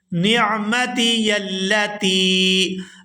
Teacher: یہاں تا کو یا ساکن کے ساتھ ملائیں گے تو کھینچ کر ادا کریں گے